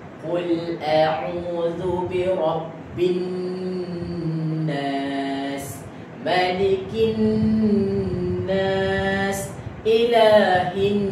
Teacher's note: Wajibal ghunnah ini kena didengungkan dua harakat. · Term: wajib dengung